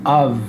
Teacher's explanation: the F is pronounced as a V as a v sound